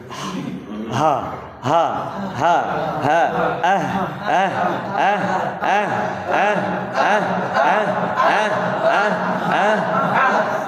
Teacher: হলকের শুরু, হ্যাঁ কণ্ঠনালীর শুরু থেকে